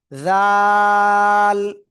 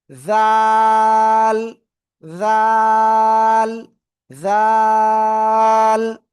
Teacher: ওই একই জায়গা থেকে তিন আলিফটা নিয়ে উচ্চারণ করবো, একটু নরম আওয়াজ।